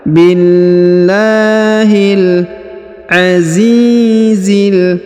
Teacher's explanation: huruf Zi dipanjangkan dua harakat karena di depannya terdapat Ya Sukun